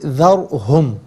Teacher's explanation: रा साकिन हो माक़बल हर्फ पर ज़बर या पेश हो तो रा साकिन को पुर पढ़ते हैं, ज़ेर हो तो बारीक करके पढ़ा जाता है।